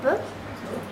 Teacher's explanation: He has to eliminate any vowel sound. He just says B. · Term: consonant